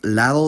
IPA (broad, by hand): ˈlaðo